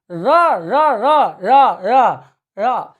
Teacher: जैसे आप बोल के देखो, र, मैं उंगली डाल रहा हूं, र र र र र र, ये जिह्वा लुढ़की हुई है, यानी लुंठित वर्ण वह है जिसके उच्चारण में जिह्वा लुढ़कते हुए किसको छूती है? तालु के मध्य भाग को।